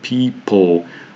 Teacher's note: the vowel sound schwa between the sounds p and the l practically disappears, making these p and l sounds join together and form the so-called consonant unity, so there's no vowel sound there at all.